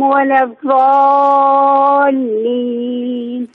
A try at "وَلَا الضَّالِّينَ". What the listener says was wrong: لكن الضاد بحاجة إلى تدريب. الضاد ليست ضاء. المغضو ولا الضاء.